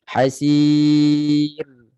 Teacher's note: Maka ra itu tarqiq, nipiskan ra. Hasir. Okey, dan perhatikan, bagi perhatian jangan kita nak nipiskan ra sampai bunyi ra tu hilang.